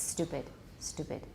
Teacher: it becomes voice and that's not right so don't voice it you can reduce the aspiration but it does not become voice